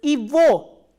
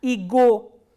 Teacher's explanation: And one more thing you have to remember is, in this combination, this g is pronounced as v, not as g